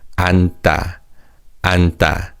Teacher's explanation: The 지읒 받침 in the 겹받침 is silent, so it's read 앉다, 앉다. And as you can hear, the 디귿 in 다 sounds like 쌍디귿 · The verb to sit is 앉다, 앉다. The 지읒 받침 in the 겹받침 is silent, so it's read 앉다, 앉다.